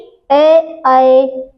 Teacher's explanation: अर्ध समृद्ध स्वर वे स्वर होते हैं जिसमें मुख द्वार आधा बंद रहता है, मतलब हम जब इसको बोलेंगे तो बोलने में हमारा मुख द्वार जो होगा आधा बंद होगा और आधा खुला रहेगा।